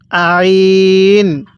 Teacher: আইনটা পড়ার সময় গলার মধ্যে চাপ দিয়ে পড়বো